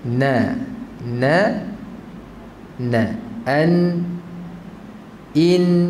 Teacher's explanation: Nun pada lidah tu setengah daripada makhraj dia pada hidung tu setengah. Maksudnya kalau nun tak ada ghunah, tak sempurna sebutan huruf dia.